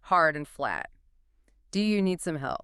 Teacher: you drop the pitch hard and flat